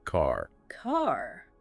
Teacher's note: most American accents are rhotic. You hear that R in words like car